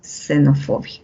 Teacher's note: en xenofobia, al inicio de palabra suena como una S